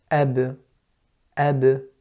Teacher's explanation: look at the lips are touching, then they are separating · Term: qalqala